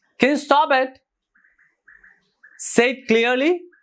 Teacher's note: the first word and the third word are stressed